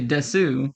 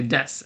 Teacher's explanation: You don't say desu, you say des, as if the U wasn't even there. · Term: U's in Japanese words